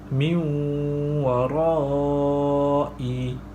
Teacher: Nun mati bertemu dengan huruf waw. Cara bacaannya ialah memasukkan nun mati ke dalam huruf waw beserta dengung 2 harakat. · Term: idgham ma'lunah